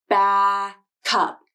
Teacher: with the k sound placed at the beginning of the word up and the k sound is released